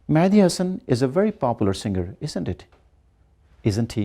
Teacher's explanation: So here the voice is going down because we know that he's a great singer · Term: falling intonation